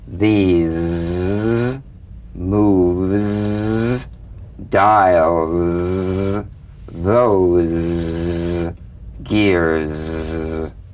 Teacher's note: feel a smooth, strong vibration in the teeth and in the front of the tongue. Zzz, zzz, zzz, zzz. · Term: Z sound